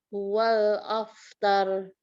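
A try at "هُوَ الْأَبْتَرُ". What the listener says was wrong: Huruf ba itu abtar. Nah, rok di akhir jadi tebal. Wal abtar.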